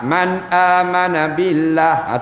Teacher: nun mati jumpa dengan hamzah tak boleh dengung